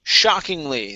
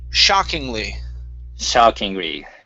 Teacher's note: the stress is at the very beginning of the word